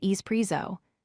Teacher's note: Do not say ex-presso with an X sound